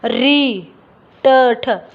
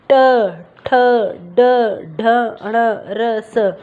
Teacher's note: जो हमारी जीभ है उसका आगे का हिस्सा वो मुड़कर ऊपर की तरफ लगता है। ठीक है, ऊपर तलवे की तरफ लगता है। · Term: मूर्धा